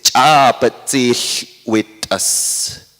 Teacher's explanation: So this suffix, the ahs, will make the stops ejective.